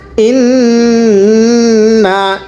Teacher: আপনি আমার সাথে পড়েন এখানে ইন্নায় টান হবে না